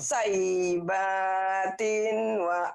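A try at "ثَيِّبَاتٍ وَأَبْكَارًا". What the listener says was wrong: Kena tasjid tuh. Number. Saibatil. Saibatil. Wa abkaro. Agak susah nih.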